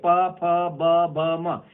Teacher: इसमें होठ बंद होता है, खुलता है, होठ बंद होता है, खुलता है, क्योंकि ये होठ में इसका स्थान है, निकल रहे का स्थान होठ है, तो ओठ के कारण इसको हम ओष्ठ कहा जाते हैं। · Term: ओष्ठ वर्ग व्यंजन